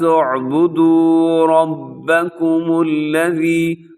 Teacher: رب میں را موٹا پڑا جائے گا، را کے اوپر حرکت ہے